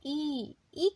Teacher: जीभ का आगे का भाग की मदद से हम ई का उच्चारण कर रहे हैं। उसी तरह अगर बड़ी ई की बात हो तो ई में भी जीभ का आगे का भाग प्रयोग में हो रहा है। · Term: अग्र स्वर